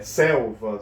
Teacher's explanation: a sílaba tônica é a paroxítona. é a penúltima